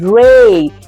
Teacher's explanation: it's not blunt or the straight sound it's a slightly gliding sound